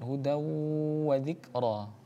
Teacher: Hudawu wa dzikra, ya. Ada tanwin atau fathatain bertemu dengan huruf wawu, maka hukumnya adalah idgham bi gunnah dengan gunnah